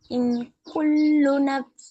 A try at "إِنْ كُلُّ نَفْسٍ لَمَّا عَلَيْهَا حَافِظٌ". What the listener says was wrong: தொண்டைக்குள்ள போக கூடாது. கு முன்னாடி வரணும். கு.